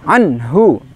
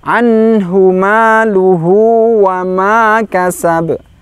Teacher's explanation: nun sukun sifatnya tawasud, pertengahan, jangan berhenti